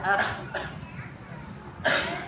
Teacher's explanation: Huruf kho adalah hams, udara yang mengalir akh dan mengalir suara juga akh.